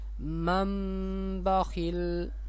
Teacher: نون ساکن یا تنوین کے بعد با آ جائے، پہلے والے لفظ کو میم کے ساتھ بدل دیں گے. ٹھیک ہے، یہ نون ساکن ہے، اس سے پہلے یہ میم ہے نا، اس میم کو اس میم کے ساتھ ملائیں گے. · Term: اقلاب